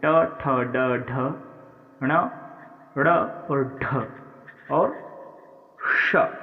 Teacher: यानी कठोर तालु के अगले भाग से ट ठ ड ढ ण ड़ और ढ और श, ये होते हैं मूर्धन्य